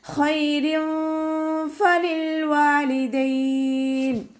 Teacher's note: ഫ ലൈറ്റാക്കിയിട്ട് ഉച്ചരിക്കുക. മേലെ മുൻപല്ലിൻ്റെ അറ്റം താഴെ ചുണ്ടിൻ്റെ ഉൾവശത്ത് നനഞ്ഞ ഭാഗത്ത് വെക്കാനായിട്ട് ശ്രദ്ധിക്കുക. ലാം കൊൽക്കല ലെറ്ററില്ലാത്തത് കൊണ്ട് ഹാഫ് സുക്കൂന് കൊടുക്കുക.